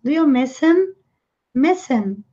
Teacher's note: Aqui nós temos um H, him. Mas, na fala, foi muito comum eles emendarem com a vogal e suprimir o H